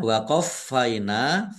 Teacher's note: fa-nya dibaca double, ada tasdidnya. Ditekan biar tampak doublenya. Nun fathah alif, mat tabi'i, panjang dua harokat.